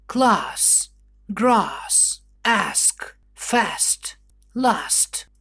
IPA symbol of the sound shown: ɑː